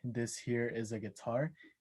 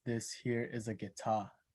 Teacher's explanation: he has a tendency to drop the phoneme R in words that contain it towards the end